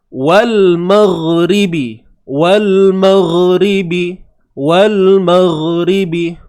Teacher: huruf ghain duduknya di hujung kerongkong kita. Keluarnya daripada hujung kerongkong. Dan sifat yang ada pada huruf ghain ini adalah suara yang mengalir.